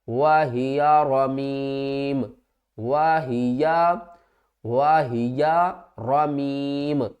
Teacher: وقف کی صورت میں میم کی جو دو پیش ہیں یہ ختم ہو جائیں گی